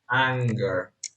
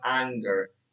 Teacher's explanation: And whenever the construction n plus g is in the middle of the morpheme, whenever you have it in the middle of the morpheme, um, you will utter the velar plosive. Yes, the tendency is to utter the voiced velar plosive